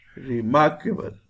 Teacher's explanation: When we pronounce remarkable, re is pronounced with lower sound, mark is pronounced with higher sound. We call it is stressed.